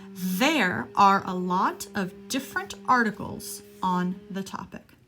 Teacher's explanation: the th and there is voiced you are moving your vocal cords